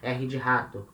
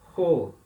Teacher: É sempre esse som do R aspirado que a gente fala.